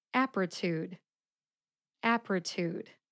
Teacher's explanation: the first syllable app gets the emphasis